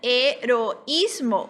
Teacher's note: o I também é a vogal fraca, a vogal débil, mas ela é a mais intensa, é onde está a sílaba tônica